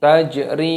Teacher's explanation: ada huruf jim yang berharokat sukun, ini diqalqalah, dipantulkan.